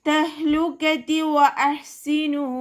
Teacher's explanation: വാവ് ഉച്ചരിക്കുന്ന സമയത്ത് ചുണ്ടുകളെ സർക്കിൾ ചെയ്ത് പിടിക്കുക. ഹ കൊൽക്കല ലെറ്റർ ഇല്ലാത്തത് കൊണ്ട് ഹാഫ് സുക്കൂന് കൊടുക്കുക.